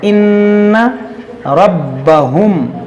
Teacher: نون مشدد غنہ کریں گے، را موٹا کریں گے، اس میں خوب جماؤ کے ساتھ